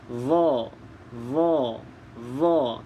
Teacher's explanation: Di mana keluarnya, iaitu hujung lidah kena pada gigi hadapan bahagian atas. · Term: huruf dha